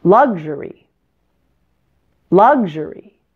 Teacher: The other two syllables, you'll notice, are shorter and not quite as loud. Notice how soft and light the er sound is in the middle.